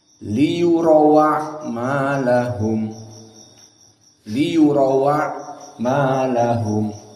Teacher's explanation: Hamzahnya dihapus. Lalu harokat hamzah a dipindahkan kepada yang sebelumnya, yakni waw. Maka waw yang tadinya sukun liyurau jadi fathah. · karena wawnya fathah, hamzahnya dihilangkan, jadi langsung kepada ain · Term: naql